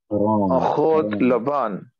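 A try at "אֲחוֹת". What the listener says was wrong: Ahuth. Ahuth. Ahuth. Thaw with no dagesh. Ahuth. Ahuth. And the het should not be pronounced like a chaf. Chaf and het make two different sounds. Chaf has friction, right? Friction is when two things rub against each other. You should feel your tongue rubbing against the top of your mouth.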